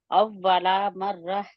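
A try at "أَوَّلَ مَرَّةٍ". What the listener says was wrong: अव्वला, अव्वला नहीं है, अभी भी आपका ला है। ला क्यों है? ला ला ला। अव्वला, अव्वला।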